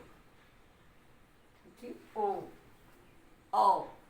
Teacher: ओ होठ और कंठ दोनों की सहायता है, इसलिए इसका उच्चारण स्थान कंठोष्ठ होगा।